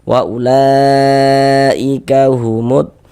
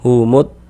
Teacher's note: Maka ini alif lam bertemu dengan huruf dod, huruf dadd huruf syamsih, maka ini hukumnya alif lam syamsiyah. Alif lam syamsiyah itu disebut juga dengan idgham syamsiyah karena dia cara membaca huruf lamnya dibaca idgham